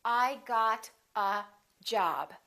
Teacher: They're both content words, but job gets more stress because it's a second word.